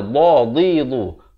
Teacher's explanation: dha ni makhrajnya di tepi lidah.